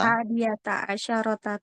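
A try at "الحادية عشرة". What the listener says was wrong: Oke, untuk 11-12-nya pakai asyrota ya. Sinnya disukun.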